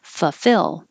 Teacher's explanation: we aren't too careful about the first l full fill that's too difficult so we skip it